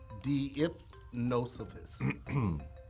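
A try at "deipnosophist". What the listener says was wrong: Deepnosophis. So that E-I is one sound. Deepnosophist.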